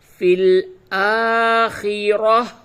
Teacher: یہ جو گول تا ہے یہ وقف کی حالت میں ہا سے تبدیل ہو جاتی ہے